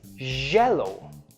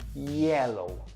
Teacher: Can you hear the vibration in my J's and the soft, smooth sound in my yellows?